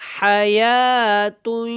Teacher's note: ادغام مع الغنہ، ٹھیک ہے، آواز کو ناک میں لے کے جانا ہے، اور یا کو جو ہے کھڑی زبر کی وجہ سے تھوڑا سا لمبا کریں گے اور ہا کو حلق سے ادا کریں گے